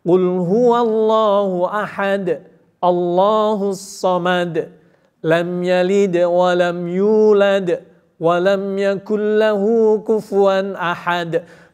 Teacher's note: berarti dalnya semuanya itu mesti harus mantul